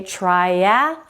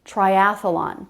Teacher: I used to say triathlon, adding an extra syllable after th